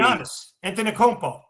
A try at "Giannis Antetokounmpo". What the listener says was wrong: It's Giannis Antetokounmpo. It's not Anti, but sure.